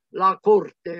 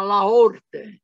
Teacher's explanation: La C in particolare tra due vocali non si pronuncia.